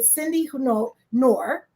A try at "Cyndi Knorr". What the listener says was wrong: Yeah, actually, we pronounce the K. Knorr.